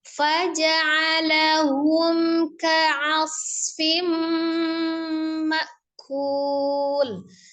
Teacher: Ada tanwin bertemu dengan mimnya idgham bi ghunnah.